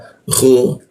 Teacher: Lalu khu di atas jakun dia ada ngoroknya huruf kha